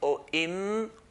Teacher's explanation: So we find out, if I say or im or the makhraj point of a meme is when the two lips touch together lightly. Or im or when the sound stops, that's where makhraj is.